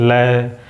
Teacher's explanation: अपने जीभ के अगल बगल से हवा निकलती हुई हमें महसूस होगा, इसलिए इसे पार्श्विक वर्ण में बोला रखा गया है। · जीभ के अगल बगल का हिस्से से जब लय बोलते तो अगल बगल से हमें हवा निकलती हुई महसूस होगी